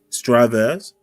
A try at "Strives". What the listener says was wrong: The E is silent. The E is silent.